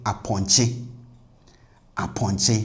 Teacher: Now once we know o is minus atr then this vowel a in front will be pronounced as the minus atr version which is the regular a sound